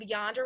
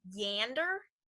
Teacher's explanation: a small a in standard American English turns into an ash in Appalachian English